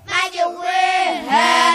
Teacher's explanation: bacaan imalah ialah memiliki bunyi fathah pada kasroh